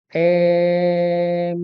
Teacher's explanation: dan diperbolehkan yang kedua dibolehkan tapi jarang dipakai dengan cara apa memanjangkan Hamzah dengan disertai imalah pada hamzahnya